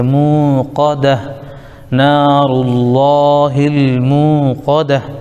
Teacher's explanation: پر زبر قا، مو قا، دال پر زبر دا، مو قاد، یہ تا گولتا ہے وقت کی وجہ سے ہا ساکن بن جائے گی